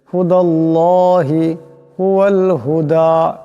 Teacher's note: কুল ইন্না এখানে নুন মুশাদ্দাদ, একালি পরিমাণ গুণ হবে। হুদাল্লাহি এখানে আল্লাহ লামের ডাইনে জবর আসছে, আল্লাহ লামকে মোটা আওয়াজে পড়তে হবে